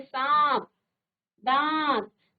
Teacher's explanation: इसका उच्चारण करते समय वायु नासिका और मुख दोनों से बाहर आती है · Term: अनुनासिक